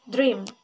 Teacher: First, voiced alveolar stop sound da, voiced palato alveolar approximant sound r, voiced bilabial nasal sound ma, and one vowel sound. It is close front unrounded vowel e.